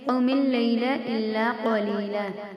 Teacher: قوم ایسے کھینچنا نہیں ہے، جلدی سے ادا کریں گے